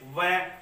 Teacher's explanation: वह बोलते तो अपने जो दांत हैं वो होठ पर टच हो रहे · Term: दंतोष्ठ